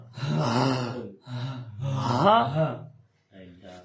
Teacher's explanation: یہ حلق کے بالکل نیچے والے حصے سے، جو آپ کے سینے کی طرف ہے نا حصہ، وہاں سے منہ کھلا رکھنا آپ نے اور زوردار آواز نکالنی ہے